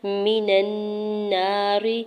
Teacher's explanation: من النار، میم کی زیر کو بغیر کھینچی ادا کرنا، نون کے زبر کو نون مشدد کے ساتھ ملاتے ہوئے غنہ کریں گے اور ساتھ الف اٹیچ الف مدہ بھی ہوگا، را کی زیر کو بغیر کھینچی ادا کرنا ہے اور باریک پڑھیں گے